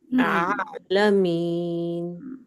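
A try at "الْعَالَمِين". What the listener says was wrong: اور تھوڑی سی نرمی لائیں، تھوڑی سی نا. آپ تو اچھا آئین پڑھا ہے آپ ماشاء اللہ، مگر تھوڑا سا سختی آ گئی. ریلیکس ہو کے. جی بالکل. آپ شاید زبان اٹھا رہی ہیں.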